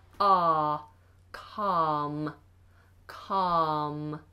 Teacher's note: um calm is pronounced with a silent L yes yes calm has a silent L we just have a long vowel